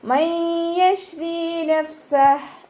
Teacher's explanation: നൂൻ സാക്കിനയ്ക്ക് ശേഷം ഇദ്ഗാം ബിഗുന്നയുടെ അക്ഷരമായിട്ടുള്ള യാ വന്നു. നൂൻ സാക്കിനയെ യായിലേക്ക് ലയിപ്പിക്കുകയും ചെയ്യുക, ഉന്ന കൊടുക്കുകയും ചെയ്യുക